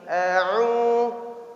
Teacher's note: Tapi huruf ain. Karena huruf ain tidak huruf yang keluar dari hidung. Dia keluar dari tenggorokan.